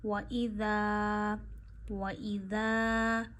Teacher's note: ذال آپ بڑی ہی نرمی سے پڑھتے ہیں، آپ کی زبان کی نوک کے اوپر والا حصہ، زبان کا سرا اوپر کے دانتوں کے آخر پہ لگاتے ہیں اور بہت نرمی سے پڑھتے ہیں ذال۔ وَإِذَا وَإِذَا قی، قوف یا زیر قی۔